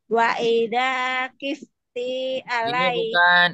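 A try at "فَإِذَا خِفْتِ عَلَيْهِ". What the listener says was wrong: ini bukan wa ya, ini huruf fa. Fa idza khifti alai.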